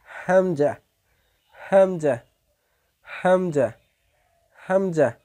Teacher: হামজা হলকের শুরু হইতে গলার শুরু হইতে উচ্চারিত হয়